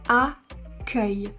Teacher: il existe aussi le mot accueil où ici on a un E ouvert. Accueil. Parce que c'est la dernière syllabe du mot.